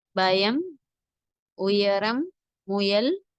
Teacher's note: யா நாவின் நடுப்பகுதி மேல் வகையை தொட்டும் தொடாமலும் இருக்கும்போது உண்டாகும் குரல் மெருதுவாக இருக்க வேண்டும் யா உதாரணம் பயம் உயரம் முயல் என்பதில் உள்ள யாவை போன்று உச்சரிக்க வேண்டும்